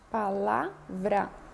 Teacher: Então, lá é a sílaba tônica, pá e vrá são sílabas átonas.